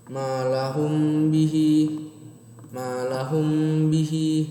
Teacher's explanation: cara membacanya dengung, yaitu mim sukun dibaca bergandengan dengan huruf ba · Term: ikhfa syafawi